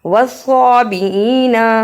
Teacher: والصابئین صاد کو پھر موٹا پڑھا، نا کو جلدی پڑھنا ہے۔